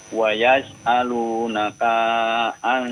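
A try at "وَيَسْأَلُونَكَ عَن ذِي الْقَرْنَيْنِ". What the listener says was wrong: Jangan dipanjangin, Pak. Ulang lagi, jangan dipanjangin, huruf kafnya pendek. Wa yas'alunaka 'an dzil qarnain.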